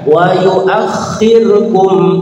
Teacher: kha-nya ditasydid maka ditekan. Wa yu'akhirkum, kumnya jelas, ilahnya panjang, ada bendera, namanya mad jaiz munfasil, boleh 2, 3, 4, 5, aktualnya 5.